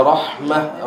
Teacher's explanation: Rahmah ha nipis, ada ha pedas, ada hams. Maka lepaskan hams dia dulu.